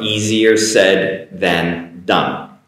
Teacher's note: The easy S comes across as a Z pronunciation for the most part.